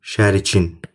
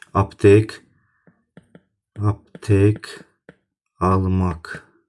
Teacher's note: Bax, bunun yazılışı da, deyilişi də eyni olacaqdır. Tələffüzündə şəriyin y-yə çevrilməyəcək, k kimi qalacaqdır.